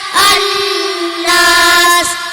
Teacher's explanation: Asy-syamsiyah bihuna yaitu asy-syamsiyah bertemu huruf nunun dan cara bacanya dengung